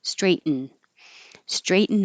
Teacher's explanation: your tongue goes to the T position for straight and then you make the N noise